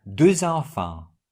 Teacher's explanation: We have liaison, which means the final X is pronounced like Z.